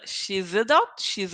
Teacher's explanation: Here I have a vowel. I'm going to connect the sounds. And in this case, the sound will be like a Z.